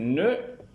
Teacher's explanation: Dans le cas de l'occlusif ne, il y a blocage de l'air au moyen de la pointe de la langue derrière les incisives supérieurs, aussi appelle-t-on cet occlusif un occlusif apicodontal.